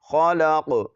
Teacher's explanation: خا کو بھی موٹا پڑھیں گے اور قاف کو بھی، اور قاف پر قلقلہ بھی کریں گے